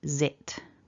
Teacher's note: So you've got that Z, which is a voiced z, z, a short I, and then a little t at the end